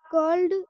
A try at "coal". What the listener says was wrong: फिर से बोलो, फिर से कोल्ड बोल दिया आपने इसको।